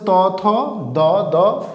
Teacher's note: এই শব্দগুলো উচ্চারণ সম্বন্ধে আমাদের জিহবাটা দাঁতের সাথে স্পর্শ হয় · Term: দন্ত ধ্বনি